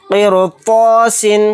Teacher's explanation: رائے ساکنہ کو باریک پڑھنا تھا، لیکن باریک نہیں پڑھا جا رہا ہے یہاں پر. اس کی وجہ یہ ہے کیونکہ رائے ساکنہ کے بعد طوا ہے، طوا حروف مستعلیہ کے حروف میں سے ایک حرف ہے، تو اس حرف نے رائے ساکنہ کو موٹا یعنی پر پڑھ دیا.